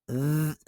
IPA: ð